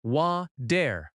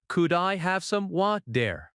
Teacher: Water in American English often has a soft t sound. It sounds like wa-der.